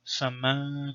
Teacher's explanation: you don't pronounce it as noon, it just becomes nasalization